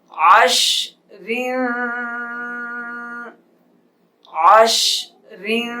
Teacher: وقف میں را موٹی ہو جائے گی. جب اس کے ہجے کریں گے رواں پڑھیں گے تو را کے نیچے زیر ہیں اس لیے باریک پڑھیں گے. وقف جب را ساکن ہوگی تب موٹی ہوگی.